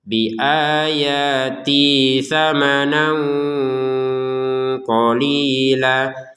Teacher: Di atasnya ya di bawahnya harakat fathahnya ini ada alif kecil. Menandakan bahwa harakat fathahnya harus kita panjangkan dua harakat ya